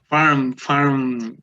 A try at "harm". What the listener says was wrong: Harm, no farm.